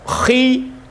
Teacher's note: Otomatis ketika berharakat kasrah itu posisi mulut kan turun kan? Posisi mulut turun, otomatis kadar tafkhimnya itu berkurang jika dibandingkan dengan kadar tafkhimnya huruf kha yang berharakat fathah ataupun dhammah.